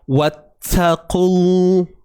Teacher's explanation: Sifat hams ni yang bunyi tu. Jadi pada ta yang bersabdu, sifat hams tu tidak perlu ditonjolkan.